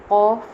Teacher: قوف، ایک تو یہ کاف نہیں پڑھنا، قوف پڑھنا ہے، حلق سے نکالنا ہے، موٹی کرنی ہے آواز